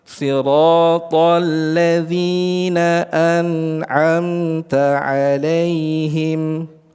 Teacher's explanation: Adapun yang izhar, beliau menempatkan tingkat yang keempat di sini pada tingkat gunnah nakisah. Gunnahnya, kadar gunnahnya itu tidak terlalu sempurna, sedikit berkurang.